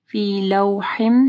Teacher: واو ساکن سے پہلے لام کے اوپر زبر ہے، مدلین آ رہی ہے